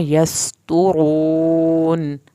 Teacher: अलिफ को यस सीन पे सीटी की आवाज़ निकलेगी। त्वा को पुर करके यहाँ पे होंठों को गोल करेंगे ताकि हमारी दोनों जो पेश हैं वो सही अदा हों।